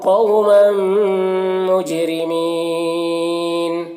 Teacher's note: یہاں پر میم ہے اور میم کے بعد میم کے اوپر تنوین ہے، اور ہم یہاں پر میم مشدد ہے تو وہ میم کو میم سے ملا کر غنہ کے ساتھ میں پڑھیں گے، اور اس کو ادغام شفوی کہتے ہیں